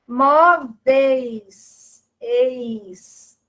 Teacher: Nós temos vogal E, semivogal I. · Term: ditongo decrescente